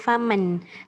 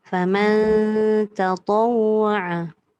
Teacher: Sebab dia ikhfa. Ikhfa tak boleh bunyi nun yang jelas.